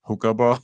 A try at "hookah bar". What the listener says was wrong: it sounded like you said the hooker bar. You got to be careful with how you say that.